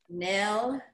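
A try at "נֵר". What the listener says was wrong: Almost. Do it once again. There's no L sound in there.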